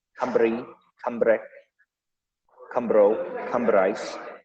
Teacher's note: R is slightly rolled, not in an intense Russian way, just kind of a little softer, more trilled.